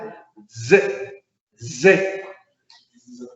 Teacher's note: Digo D primero y luego hago lo sibilante. · Utilizo lo dental y termino en lo sibilante. Esta la vamos a conocer como consonante dental, pero como contiene otro sonido, la llamaremos doble dental.